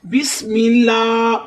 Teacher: اگر الف والے لام سے پہلے میم پر زبر ہوتی یا پیش ہوتی تو الف والا لام موٹا ہونا تھا۔ اب الف والے لام سے پہلے زیر ہے، اس لیے ہم اس لفظ کو بسم اللہ باریک پڑھیں گے۔ ہا کی آواز حلق سے نکالیں گے۔